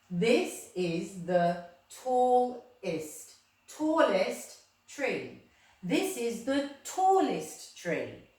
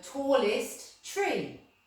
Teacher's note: I've added the EST at the end of my adjective, but it sounds like an ist